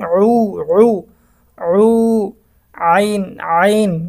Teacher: আইনের উচ্চারণটা একটু গলাটা চাপ দিয়ে পড়তে হবে। হলকের অর্থাৎ গলার মাঝখান থেকে আইনটা বের হবে।